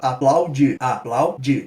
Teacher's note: A gente pode ver ali no aplaudir. O plau é um ditongo decrescente, tem a vogal A e a semivogal U.